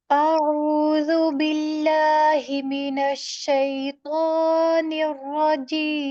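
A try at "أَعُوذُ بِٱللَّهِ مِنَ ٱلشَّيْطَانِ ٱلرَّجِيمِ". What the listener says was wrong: इतना नहीं खींचना है। یہاں جو ہے را کے تو کے اوپر جو ہے وہ مد تو نہیں ہے نا، صرف ایک الف کے برابر ہوا، تو زبر الف تو، شی تو، زیادہ نہیں کھینچنا یہاں پہ۔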